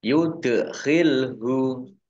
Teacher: dal sukun bacaan kolkolah, dibaca memantul, ya ditampakkan pantulannya.